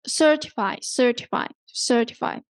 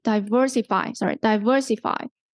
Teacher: you do not emphasize the last syllable okay but you emphasize the syllable before the suffix